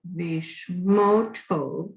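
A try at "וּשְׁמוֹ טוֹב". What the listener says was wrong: Ushmo Tov. Instead of va, it just sounds like, yeah.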